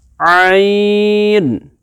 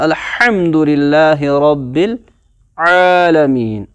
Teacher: we have to pronounce them from the centre of the throat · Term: وسط حلق